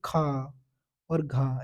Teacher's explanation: दूसरे और चौथे पर आ जाए तो वे महाप्राण होते हैं महाप्राण का मतलब होता है इनमें हम जब बोलते हैं तो इनको आवाज ज्यादा निकलती है